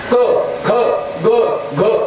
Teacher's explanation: क ख ग घ हे कंठे. फक्त कंठातल्या कंठातच मेळ लागला, बाकी ओठाला दाताला काही सायास नाही